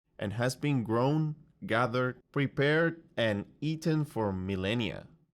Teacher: Grown, gathered, prepared, and eaten all have upwards intonation to show he's giving a list. And then millennia has downwards intonation to show the list is finished